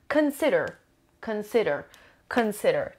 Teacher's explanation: Three syllables and the stress is on the second syllable.